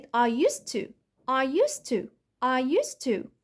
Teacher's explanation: في حاجتين حصلوا، وقعت الصوت الدي عملت له elision او omission، حذفته خالص، وصوت الزد اتحول او صوت الز اتحول س